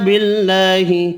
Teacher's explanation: اللہ کا نام والا لام با والی زیر کی وجہ سے باریک پڑھیں گے